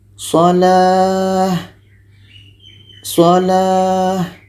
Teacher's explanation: Ini namanya tamarbutah. Kalau kita berhenti menjadi huruf H.